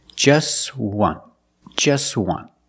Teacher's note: We see the t is between consonants, so it's silent. Link the sounds together.